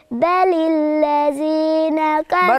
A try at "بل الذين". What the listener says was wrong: برضو الذين. بل مش بطلع ربع لساني، ده طرف اللسان. الذين.